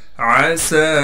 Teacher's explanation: आइन को साफ करके गले से निकालेंगे। · सीन में सीटी अदा करने के साथ फिर सीन पर कड़ा ज़बर होने की वजह से सीन को 1 अलिफ की मिकदार खींचेंगे। सीन के बाद जो ये या है इसे हम नहीं पढ़ेंगे।